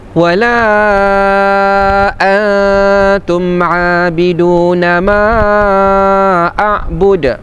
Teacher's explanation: Ma a'bud pun mad jaiz munfasil kita baca 4 harakat juga.